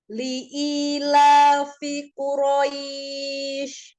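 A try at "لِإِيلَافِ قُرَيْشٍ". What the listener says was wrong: Li'ilafi Quraisy. Jangan langsung hilang, tampakkan tafasyi di huruf shin.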